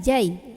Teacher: Maka cara membunyikan tanwinnya ini enggak lagi bunyi an, melainkan langsung lebur saja ke ya, masuk dan berdengung. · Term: idgham bi gunnah